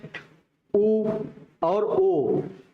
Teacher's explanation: ये कैसे शब्द हैं तो ओ जब बोल रहे हैं तो ओठों को क्या कर रहे हैं गोल बना दे रहे हैं गोल बना कर के हवा को हम बाहर फेंक रहे हैं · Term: ओष स्वर